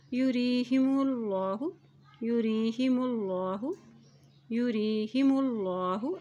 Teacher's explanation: اللہ کے نام سے پہلے پیش آ گیا تو اللہ کا نام موٹا ادا کیا جائے گا